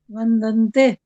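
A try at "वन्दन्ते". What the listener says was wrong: हाँ जी, शाबाश, बिल्कुल ठीक है, वंदन्ते,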